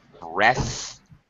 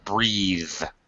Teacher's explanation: when we create the verb, we add an e and the th becomes voiced